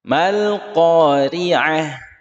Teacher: Ri tipis ya, ri kasrah tipis.